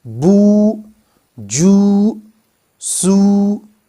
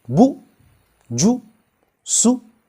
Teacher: it would no longer be a long vowel. It would become a short vowel represented by dammah